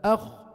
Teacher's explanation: جزء كبير من لسان عم يطلع الحنك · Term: استعلاء